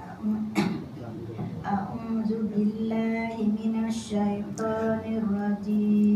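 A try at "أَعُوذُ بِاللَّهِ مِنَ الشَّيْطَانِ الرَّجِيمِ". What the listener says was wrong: Kalau tu tak betul lah. Tu lagu mana? Bunyi macam huruf syidah. Dia bukan syidah. Dia jadi tu betul tak? Tu tak betul.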